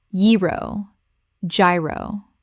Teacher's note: The G makes a Y sound.